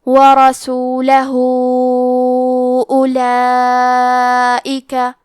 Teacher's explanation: کلمت ورسولہ میں حرف الراء کو موٹی آواز میں پڑھیں گے، لام پہ زبر ہے لہذا ہمیں زبر کو ظاہر کرنا ہے، ہاں پہ الٹا پیش ہے اور اس پہ مد کا علامہ ہے، یہ مد صلہ کبریٰ ہے، اس مد میں ہم اپنی آواز 2 سے 4 مد کے برابر لمبی کریں گے